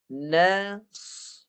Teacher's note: Dia bunyi dia separuh je atau setengah harakat saja. Dia matikan dengan setengah harakat tu dengan bunyi desiran sahaja. Mati dengan desiran sahaja sebab dia bunyi dengan harkat.